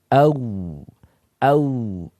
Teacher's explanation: Waw sifatnya adalah rokhwah. Au agak panjang.